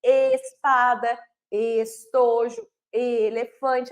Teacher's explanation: eu tenho um E mais fechado. É diferente a minha boca do ou do E, igual eu estou tendo aí nas fotinhos.